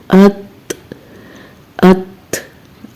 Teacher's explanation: जबान की नोक का ऊपर वाला हिस्सा ऊपर के दो दांतों की जड़ के साथ लगता है, तो फिर ता अदा होता है। अब जब हम इसको साकिन हालत में कर रहे हैं तो आप देखिएगा कि आपकी जो जबान है वो इसके मखरज को पकड़ लेगी।